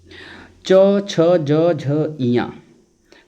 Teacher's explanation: तालू से जो है च छ ज झ इया का उच्चारण स्थान होता है